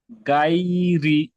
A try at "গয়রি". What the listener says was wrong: গাই হবে না, গয়রি।